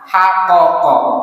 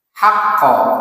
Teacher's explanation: haqaqa berubah menjadi haqqa dengan ditasdid qafnya. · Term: idgham